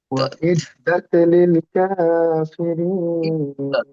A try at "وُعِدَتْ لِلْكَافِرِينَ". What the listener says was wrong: ওয়াও হয়ে যাচ্ছে, উ ইদ্দাত হবে উ।